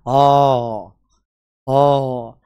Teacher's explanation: भी यहां से मानेंगे जैसे आ आ तो ऐसा लगता है आ कहां से बोला जा रहा है पीछे वाले भाग से मतलब पश्च भाग से